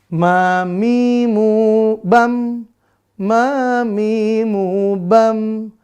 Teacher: Ma, tidak ada udara yang berhembus, berarti napasnya tertahan atau tidak berhembus. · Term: huruf ma